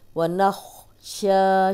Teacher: شا کو 2 حرکات لمبا کریں گے. کھڑی زبر ہے.